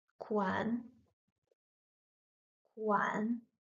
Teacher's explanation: stop the tongue on your teeth when you say the N sound